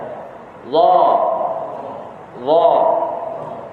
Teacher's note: Dia tertahan nafas, bukan tertahan suara. Tertahan nafas semasa menyebut hurufnya.